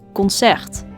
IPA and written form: kɔnˈsɛrt (Concert)